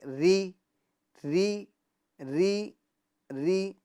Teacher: را کے نیچے زیر ہو تو را کو باریک پڑھیں گے